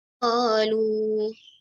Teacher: Kalau berhenti pada situ, pada qalunya, maka qalu hanya 2 harakat saja.